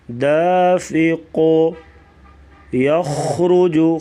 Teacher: خا گلے سے آواز نکالیں گے اور را کو پر پڑھیں گے